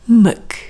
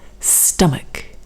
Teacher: And you can see here we have the same spelling, A-C-H at the end, but the pronunciation is completely different. Here we're going to use the schwa, the weak sound, muk. And CH here is now a K sound.